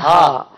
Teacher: اور ہا کی ادائیگی میں ایک بات میں عرض کروں کہ ہا جو ہے بعض اوقات ایسا ہوتا ہے کہ ہا کا جو مخرج ہے گول چشمی ہا، ایک تو ہا ہے جی، ایک ہے ہا. ہا کا جو مخرج ہے یہ انتہائی حلق ہے، یعنی سینے سے جو متصل حلق کا حصہ ہے یہاں سے ادا ہوتا ہے ہا.